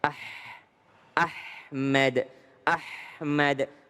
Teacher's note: huruf ha itu lepaskan nafas kita ya. Ah ahmad Ahmad mengalir.